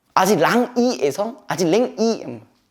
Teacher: 후설에서 전설로 바뀐 거예요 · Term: 이모음 역행동화